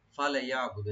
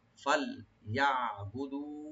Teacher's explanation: ফাল, এখানে লামটাকে সাকিন করে রাখতে হবে যেন কলকলা না হয়। ফালে, ফালে ইয়াবুদু এরকম না, ফাল ইয়াবুদু, আইনটাকে রাইট দিবেন, দু একালে টানবেন।